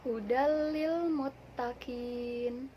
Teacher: meleburkan nun mati atau tanwin tanpa dengung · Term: Idgham billaghunnah